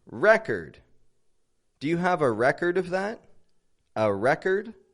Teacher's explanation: difference is that the verb is stressed on the second syllable the noun however is stressed on the first syllable